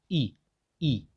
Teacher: तो इसमें देखिए आपका मुख जो है वो लगभग बंद है, ठीक है? खुला नहीं है, लगभग बंद है ये। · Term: संवृत